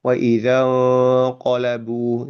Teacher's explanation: ketika nun sukun atau tanwin bertemu dengan huruf qaf, itu nanti bacaan ikhfa-nya nanti menjadi bunyi eng nanti